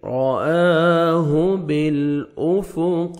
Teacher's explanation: وَلَقَدْ رَآهُ، را کو مر زبر ہے، را کو موٹا کر کے پڑھیں گے، حمزہ کو مر کھڑا زبر ہے، الف مدہ کے قائم مقام ہے، 1 سیکنڈ کھینچیں گے، ہاں کو اپنے صحیح مخرج سے ادا کریں گے۔